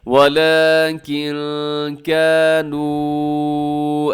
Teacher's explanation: یہاں نون ساکن کے بعد کاف ہے تو یہاں پر آپ نے اخفا کرنا ہے